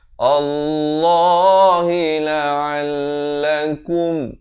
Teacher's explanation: Allah lam jalalah dibaca tebal 2 harakat.